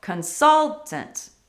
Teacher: we need to stress the second syllable